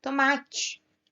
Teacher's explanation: O ma é a sílaba que se destaca. Então, o ma é a sílaba tônica.